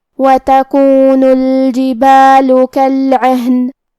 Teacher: یہاں حرف العین کو ہم حلق کے درمیان والے حصے سے پڑھیں گے، اور کیونکہ ہا پہ جزم ہے تو ہمیں ہا کو ظاہر کرنا ہے۔